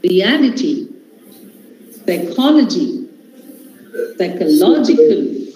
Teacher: Okay, now the words ending with ity, logy, cal. Where is the stress? This is on the third last syllable.